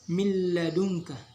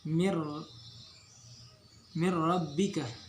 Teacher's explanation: maka hukum bacaannya tidak boleh didengungkan, tetapi wajib dileburkan nun mati atau tanwin ke dalam huruf sesudahnya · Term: idgham bila gunnah